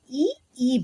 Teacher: ತಾಲವ್ಯದಲ್ಲಿ ಅಂದ್ರೆ ದವಡೆಯ ಮುಖಾಂತರ ಉಚ್ಚಾರಣೆ ಮಾಡುವಂತಹ ಅಕ್ಷರಗಳು